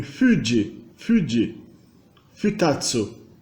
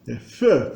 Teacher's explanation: E o F em si representa também um fonema que é uma fricativa bilabial.